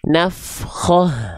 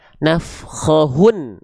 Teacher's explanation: huruf terakhirnya adalah huruf ta marbutoh, maka dia dibaca ha besar sukun, pasti sukun. Apapun harokatnya pasti sukun.